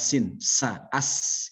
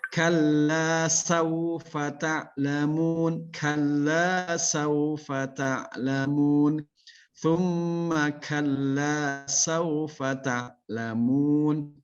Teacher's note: perhatikan huruf sa ujung lidah di antara dua gigi seri, pengucapan jelas